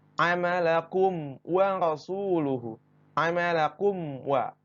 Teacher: jadi tidak ada dengung ataupun tambahan hukum-hukum yang lain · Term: izhar syafawi